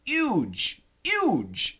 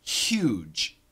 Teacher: many Americans actually say huge and they do sometimes in the UK also huge huge uh without the H